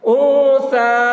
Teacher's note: نون ساکن کے بعد حروف اخفا میں سے ثا آ رہا ہے، اس لیے نون کی آواز کو ناک میں چھپا کر پڑھیں گے، اس کو اخفا کہتے ہیں۔